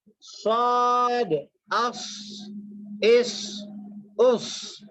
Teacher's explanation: صاد کو موٹا پڑھیں گے، سین کو باریک پڑھیں گے